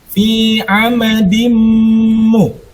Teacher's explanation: Suara nun sukunnya masuk ke dalam suara mimnya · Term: idgham